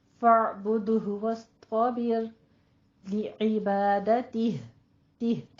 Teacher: لی عبادتہ میں لی دونوں کسرہ کی آواز آپ نے باریک رکھنی ہے، ٹھیک ہے. اور تہ میں آپ نے یہاں پہ ہا کی ساؤنڈ لازم دینی ہے